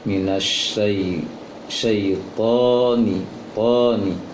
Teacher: Sebagian kaum muslimin memperhatikan syaitani, syai-nya terpanjangkan, keliru. Yang dipanjangkan adalah to-nya saja. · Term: to-nya yang panjang